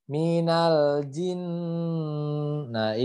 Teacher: di sini ada dua Nun bertasydid ya jadi harus ditahan keduanya